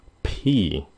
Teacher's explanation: xong rồi phun nó ra cái xong rồi cái âm y Nếu mình để cái bàn tay trước môi cái người nào phát âm pi mình có thể cảm giác là cái gió họ ra rất là nhiều pi nhiều khi cũng bị ướt tay nữa ví dụ cái